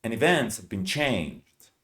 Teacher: It's an auxiliary verb. So we don't pronounce it. No H, no A.